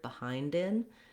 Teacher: If I say I'm behind in my classes, then I'll link and put that D on the next word, behind in. If I say behind the door, I just stop my D and release right into the TH.